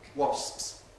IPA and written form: wɒsps (wasps)